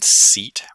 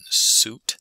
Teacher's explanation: if there's lip rounding in an adjacent sound like an ooh vowel that can begin during the S · So for example, a s alveolar fricative phoneme doesn't require the use of the lips. So if there's lip rounding in an adjacent sound, like an oo vowel, that can begin during the s. So if you listen carefully to the s in seat versus the s in suit, there is an audible difference. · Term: coproduction